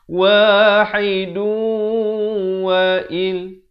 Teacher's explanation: Kalau pilih untuk wasal, kena baca dengan idgham bi gunnah sebab tanwin bertemu waw